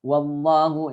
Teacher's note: lafaz Allah tafkhim karena sebelumnya fathah